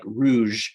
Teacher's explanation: from french like rouge um but it's the sh sound so it's the kind of voiced sh